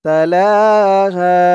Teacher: জবরের পরে খালি আলিফ থাকার কারণে এক আলিফ টান হয়েছে।